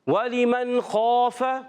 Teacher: تو حرف مستعلیہ کے بعد جو الف آتا ہے اس کو پر پڑھتے ہیں، موٹا. تو اس الف کو بھی ہم موٹا پڑھیں گے.